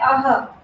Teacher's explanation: और इसका उच्चारण कंठ से होता है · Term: विसर्ग